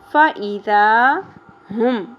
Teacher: ذال نرمی سے ادا ہوگا. الف حرف مدہ ہے، 1 الف کے برابر کھینچنا ہے